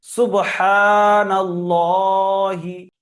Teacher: আল্লাহর লামকে পুর পড়তে হবে তার আগে জবার আছে